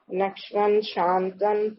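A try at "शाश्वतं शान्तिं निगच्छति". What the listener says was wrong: नश्वन कहाँ लिखा माता जी?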